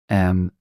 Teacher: place your lips together and push air out through your nose making a sound similar to am in me this is the